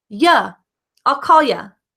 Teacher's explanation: you've probably heard native speakers pronounce you as the schwa